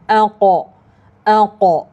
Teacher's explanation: Quraisy harfu qaf yang mana makhrajnya melibatkan bahagian pangkal lidah. Pangkal lidah dinaikkan ke arah uvula. Uvula iaitu kawasan lelangit lembut.